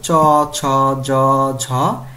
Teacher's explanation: দেখো জিভের ডগা খানিকটা প্রসারিত হয়ে কি হয়, শক্ত তালুর কাছে বায়ুপথে বাধা সৃষ্টি করে সেগুলো হচ্ছে তালব্য বর্ণ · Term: তালব্য ব্যঞ্জন